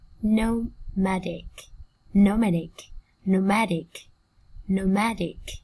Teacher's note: Trọng âm rơi vào tiết thứ hai các bạn nha. Danh từ là âm tiết thứ nhất, còn tính từ là âm tiết thứ hai.